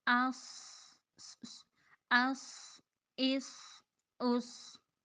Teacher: صاد کو پر کرنا ہے اور اس میں تھوڑی سی سیٹی ہوگی اور اس کی سیٹی بھی پر ہوگی